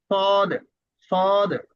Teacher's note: আচ্ছা, তারপরে পরের হরফটি হচ্ছে আহ করে, অর্থাৎ মুখের ভিতরে আওয়াজটা ধরে রেখে সদ, মুখ গোল হবে আর হবে সদ, সদ।